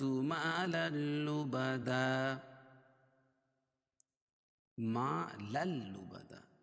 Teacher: تنوین کے بعد حروف لر کے 2 حرفوں میں سے لام ہے اس لیے اس کا ادغام بلا غنہ ہوگا. لبدن، وقفہ کی حالت میں 2 زبر کی تنوین 1 زبر رہ جائے گی اور دوسرے زبر کے قائم مقام الف آ جائے گی.